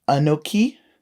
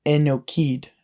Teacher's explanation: in the old style, where they don't de-stress their vowel sounds, they change an A sound to an E sound. So A to E.